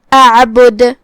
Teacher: پھر حرف العین ہے، عین کی ادائیگی کا دھیان رہے. آخری میں ہم دال پہ رکیں گے تو اس پہ جزم سے رکیں گے لہذا یہاں دال کا حکم ہے قلقلہ. قلقلہ کا معنی ہے حرف ساکن کو ہلانا، لہذا ہم دال کو ہلاتے ہوئے یہ کلمہ کو ادا کریں گے.